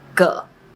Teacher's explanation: When it’s used as a measure word, it often loses its tone and is pronounced with a neutral tone.